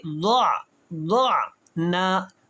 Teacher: یہاں پہ غلطی یہ کریں گے لوگ کہ ضعنا پڑھ دیں گے، عین کے اوپر زبر آ جائے گی۔ عین کو جو حلق سے نکالنا ہے تو یہاں پہ وائبریشن سی آواز آئے گی